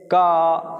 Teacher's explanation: क अगर लंबे समय तक उच्चारण करते रहेंगे तो इसमें से आ की ध्वनि निकलनी स्टार्ट हो जाएगी जो अंतत आ की ध्वनि निकलेगी तो व्यंजन वे ध्वनियां होती